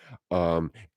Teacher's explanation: It starts off as an A and then it ends as an E. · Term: diphthongs